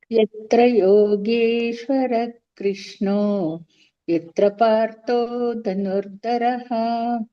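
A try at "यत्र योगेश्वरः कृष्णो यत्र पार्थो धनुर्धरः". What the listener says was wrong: ಮಹಾಪ್ರಾಣಗಳನ್ನ ಅವತ್ತೇ ಹೇಳಿಕೆ ಪ್ರಾಕ್ಟೀಸ್ ಮಾಡಿ ಉಳಿದಿದ್ದೆಲ್ಲ ಸರಿ ಇದೆ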